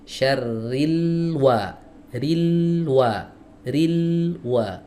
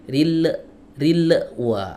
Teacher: Huruf lam ini dialirkan dulu suaranya sedikit.